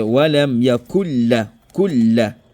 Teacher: C'est comme si le nun là rentrait dans le lam et cela n'engendre pas le ghunna. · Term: idgham kamil